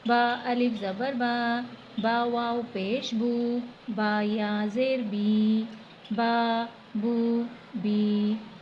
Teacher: ایک الف کی مقدار کے برابر کھینچا ہے، نہ بہت زیادہ کھینچا ہے اور نہ ہی بہت کم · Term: حروف مدہ